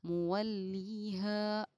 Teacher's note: अलिफ हुरूफ मद्दा है इसलिए कि अलिफ से पहले ज़बर है, इसको थोड़ा खींच कर पढ़ना चाहिए